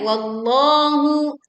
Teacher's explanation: tebalkan huruf lam di lafaz Allah